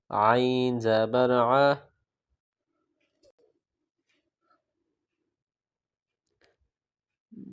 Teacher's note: عین ہے، حلق سے ادا کریں گے